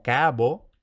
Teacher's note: En cualquier caso, lo primero que tenemos a partir de esta forma capo es la sonorización de oclusivas intervocálicas, lo cual nos da cabo, y ahora comienza un leve cierre de la A en sílaba abierta